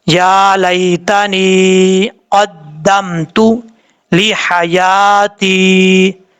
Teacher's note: یا ساکن سے پہلے زیر ہو تو یا مدہ ہوتا ہے، یہاں پر دیکھیں یا ساکن سے پہلے زیر ہے، یا مدہ ہے، ایک الف کی مقدار اس کو لمبا کر کے پڑھیں گے